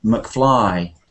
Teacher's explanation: sometimes there are two two ways to pronounce Scottish names but if it's a short name like McFly then it's always the main part which is stressed